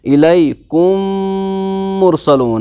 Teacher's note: अब यहाँ पर गुन्ना होगा क्योंकि दो मीम आपस में मिल गए, दूसरे मीम पर तशदीद भी लग गई, तो अब इसको कहेंगे हम यहाँ पर गुन्ना के साथ पढ़ेंगे। · तो जो पहला वाला मीम है इस मीम को दूसरे मीम में मिलाएंगे हम, दो मीमों का एक ही मीम बनाएंगे, इनको इनकॉर्पोरेट करेंगे, इस मीम को उस मीम में दाखिल करेंगे, शामिल करेंगे, मिक्स अप करेंगे। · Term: इदगाम